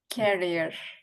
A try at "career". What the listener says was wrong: it sounds like you're putting emphasis on this syllable so say career